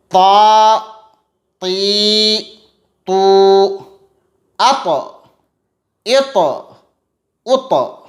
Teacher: تا کا مخرج ہے زبان کی نوک اور ثنایا علیاء کی جڑ۔